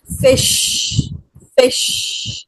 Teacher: fish begins and ends with voiceless fricative